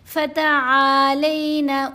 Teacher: آئین کو لمبا کریں گے مدہ لیٹر کی وجہ سے، لام کو ٹلٹ کریں گے، تھوڑا سا سلائیڈ کریں گے، تھوڑے آواز کو ٹیڑھا کریں گے لین حرف کی وجہ سے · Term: یا لین